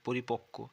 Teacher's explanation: কয় বয়ের উচ্চারণ হবে কয় কয়ের মতো, মনে হবে দুটো ক আছে